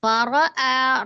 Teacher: ro, fathah dibaca tebal atau tafkhim